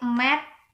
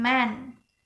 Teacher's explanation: Mat is not nasal, but man is nasal because after the vowel in man is nasal consonant. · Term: nasalized vowel